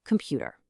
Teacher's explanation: The first O and the final er both shrink into a schwa so that the middle syllable, pu, can carry the full weight of the word stress. · To make those primary stressed syllables pop, the unstressed vowels physically shrink into this ultra-short neutral grunt